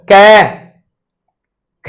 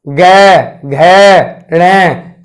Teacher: कै और ख को बोलोगे तो कंपन ध्वनि के साथ ही बंद हो जाता है। लेकिन जैसे ही आप ग, घ, ण बोलते हो तो मेरे भाई कंपन क्या होता है, अधिक मात्रा में। अर्थात ऐसा लगता है जैसे क्या बादल से घोर रहे हो, अर्थात यानी कि जैसे क्या आंधी सी चल रही हो।